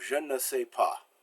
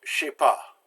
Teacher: The je is the E and je is dropped. In fact, the entire ne is dropped, and the J and the S get ran together to je sais pas.